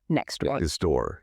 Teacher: We drop the T completely. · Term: elision